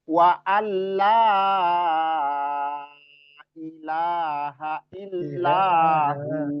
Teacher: Terus wa'alla ini jangan sampai samar ya, nggak dibaca wa'anla, tapi wa'alla langsung masuk di lam. Ya, nunnya hilang. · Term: diidghamkan